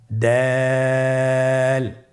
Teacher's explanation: জিহ্বার আগা সামনের উপরের দুই দাঁতের গোড়ার সঙ্গে লাগিয়ে উচ্চারিত হয়